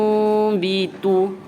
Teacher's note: kita kena tukarkan bacaan nun mati ni, bunyi nun mati tu kepada bunyi mim. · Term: iqlab